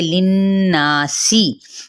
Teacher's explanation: नून पे गुन्ना और साथ ही अलिफ मद्दा, सीन की सीटी भी वाजे करते हुए सीन की जेर को लंबा नहीं करेंगे